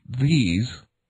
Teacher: as in these, are produced with the tongue tip sticking out between the upper and lower incisors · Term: dental lingual fricatives